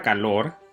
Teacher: Por ejemplo, la palabra calor tiene dos sílabas, la primera K y la segunda lor. Si gritas la palabra calor, notarás que la última sílaba, lor, tiene mayor énfasis. Así que la última sílaba es la sílaba tónica.